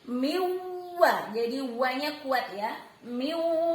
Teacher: Waw di sini berarti idgham bi gunnah juga, melebur huruf N-nya. N-nya tidak terbaca tapi melebur menjadi waw.